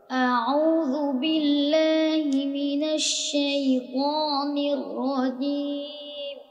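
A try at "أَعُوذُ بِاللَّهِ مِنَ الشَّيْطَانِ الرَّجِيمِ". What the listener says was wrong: দেখছো পুরা পড়াটা নাকে চলে গেছে। নাকে চাপ দিয়ে পড়তে হবে। যদি মুখে না এসে যদি কারোটা নাকে পড়া আসে তাহলে এই প্র্যাকটিসটা বেশি করতে হবে।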